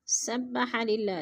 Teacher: سبح للہ، للہ کی اللہ باریک پڑھی جائے گی۔ اللہ سے پہلے لفظ لام کے نیچے زیر ہے تو اللہ کو باریک کر کے پڑھیں گے۔